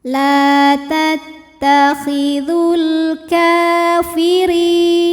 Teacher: ra ini dibaca dengan tipis, pangkal lidah datar ya, ringan. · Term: tarqiq